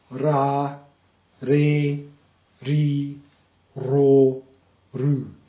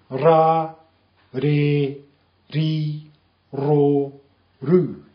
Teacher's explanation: it's a kind of a flick roll off the tip of your tongue